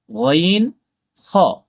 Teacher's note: ৩ নম্বর মাখরাজ কণ্ঠস্বরের শেষ ভাগ থেকে উচ্চারিত হয়, যেমন গইন, খ। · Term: হলকের শেষ ভাগ